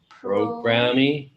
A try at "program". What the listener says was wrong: But it's not a program-me, it's program. Program.